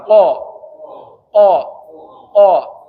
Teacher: Langit-langit yang keras itu bahagian qof.